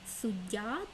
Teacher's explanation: в слові суддя є подовжений звук д